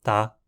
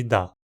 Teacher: a língua ainda decidiu manter um contraste de vozeamento em ta e da